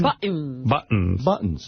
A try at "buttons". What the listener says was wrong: T. You got to say a T.